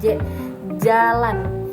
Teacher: bunyi yang dihasilkan dengan cara arus udara ditutup rapat, tetapi kemudian dilepas secara berangsur-angsur. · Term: bunyi afrikatif